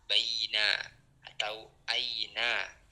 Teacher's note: mad layin ya yang di mana suaranya itu lunak atau lembut teman-teman ya. Hurufnya adalah jika ada wau sukun atau ya sukun itu didahului dengan fathah.